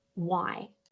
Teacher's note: The W sound and then the I diphthong